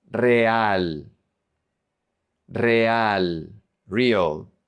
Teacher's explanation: when the single R is at the beginning of a word, it's pronounced like a double R. You roll the R.